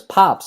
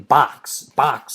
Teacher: me than box box it's like a k sound whereas pops it ends with a p sound that's a little softer to my ears than a k sound is